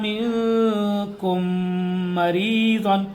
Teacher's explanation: میم ساکن کے بعد میم آ رہا ہے تو یہاں ادغام شفوی ہوگا